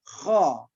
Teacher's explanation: Kha itu huruf isti'la, dia ada pada, dan termasuk juga huruf halqi. Nah, dia ada pada tenggorokan kita yang paling atas dari urutan huruf-huruf alaq.